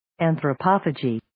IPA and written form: ,ænθrə'pɑːfədʒiː (Anthropophagy)